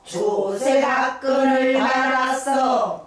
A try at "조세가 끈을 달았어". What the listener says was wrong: 다가 짧어. 을이 길어. 조세가 끈을 달았어. 을이 길어. 그 길고 다리 짧아야 된다고. 조세가 끈을 달았어. 그래갖고 액센트 위치가 바뀌잖아. 조세가 끈을 달았어. 다가 그렇게 하지 말고 왜 이렇게 다를 거기다 힘을 줘.